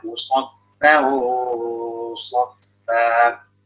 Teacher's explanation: Lalu sofa ya, itu ketemu ikhfanya ketemu huruf tebal, tanwin ketemu sod, maka ikhfanya tebal